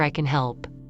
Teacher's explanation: In a neutral sentence, can may be weak while help is strong. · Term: weak form